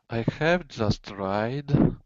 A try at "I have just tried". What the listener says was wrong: Yeah, you have to hold your vowels out more.